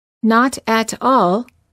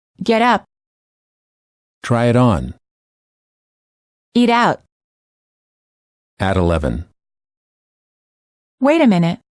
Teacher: this fast d also occurs between two separate words when the first word ends with the vowel and the T and the next word begins with a vowel